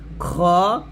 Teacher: অনেকে এটাকে খা বলি খা বলা যাবে না খ বলতে হবে কন্ঠনের শেষ থেকে খ বলতে হবে